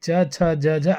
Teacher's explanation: च छ ज झ स्पर्शी संघर्षी कहलाता है क्योंकि यह स्पर्श करके आवाज निकलता है।